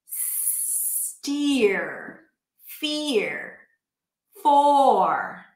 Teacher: The vowel is more important than the R, so make sure that you hold it out. · It's fear and for. We pronounce the vowel fully, but then we bring the tongue up for the R. It's a rhotic dialect. You hear the R at the end. This is the case in American English, for example.